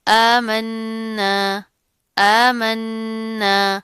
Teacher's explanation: آمنا آمنا، کھڑا زبر آ رہا ہے، ایک الف کے برابر پڑا جائے گا، نون کے اوپر تشدید ہے، غنہ کریں گے، مضبوطی سے پڑھیں گے